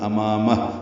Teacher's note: ما الف مدہ ہے، 2 حرکات لمبا ہے، میم کو ہا سے ملا دیں گے وقفاً، امامہ، ہا ساکن ہو جائے گا، یہ الٹا پیش مد صلہ ہے، یہ ساکن ہو جائے گی اور اس پہ ہمس ہوگا۔